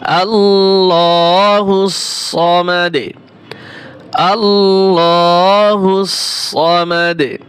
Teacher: ওয়াকফ করলে সামাদে কলকলা হবে, দালে দু উচ্চারণ হবে না।